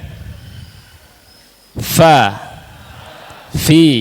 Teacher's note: Huruf fa itu bibir bawah. Bibir bawah bagian dalam. diposisikan menempel pada dua gigi seri atas. Artinya bibir atas tidak difungsikan.